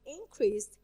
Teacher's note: I stress the first part.